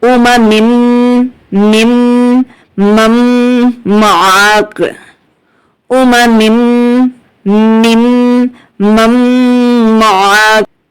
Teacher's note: حمزہ پیش او, میم زبر ما, اوما, میم میم 2 زیر مم, اوما مم, میم میم زیر مم, اوما مم مم. اب یہاں پر میم کے بعد جو نون ہے اس کو ہم ڈراپ کریں گے, نہیں پڑھیں گے, کیونکہ ساکن حرف کی زیادہ ویلیو نہیں ہوتی, تشدید والے حرف کی ویلیو زیادہ ہوتی ہے.